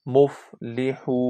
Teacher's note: واو مدہ ہے، واو کی آواز کو 2 سیکنڈ تک لانگ کرتے ہیں۔